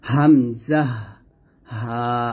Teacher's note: এই হলকের শুরু থেকে আমরা হামজা এবং হা উচ্চারণ করব হামজাহ হা এই হা টা নরমাল ভাবে পাতলা করে উচ্চারণ করতে